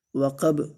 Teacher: وقب، واو کو لمبا نہیں کرنا ہے، قاف کو موٹا پڑھنا ہے اور با کے اوپر قلقلہ کرنا ہے